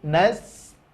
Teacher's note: Ain belajar lagi, tidak boleh masuk ke rongga hidung, ya, karena makhrajnya adalah tenggorokan atau wastul halqi, tengah-tengah tenggorokan. Nasta'in juga sempurna baris bawah i.